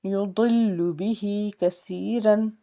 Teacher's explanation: ضاد جو ہے اس کو پر پڑھنا ہے کیونکہ حرف مستعلیہ کا حرف ہے، لام کے اوپر تشدید کا سائن، لام کو دو بار پڑھیں گے۔